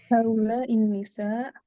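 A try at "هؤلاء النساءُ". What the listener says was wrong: Haula nisa'u ya. Nisa'u. Harokat akhirnya jangan lupa untuk dibaca.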